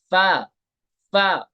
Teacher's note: ऊपर वाला दांत निचले होठ के ऊपर लगाओ